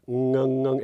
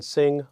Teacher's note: the middle of your tongue is up against your soft palate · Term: ng sound